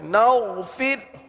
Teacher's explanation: را کو باریک پڑھیں گے، فر کی را کو باریک پڑھیں گے.